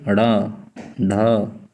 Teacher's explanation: तो इनको बोलने पर जीभ आप देख रहे होंगे कि उछल जा रही है, फिर धीरे से नीचे आ रही है। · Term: उत्क्षिप्त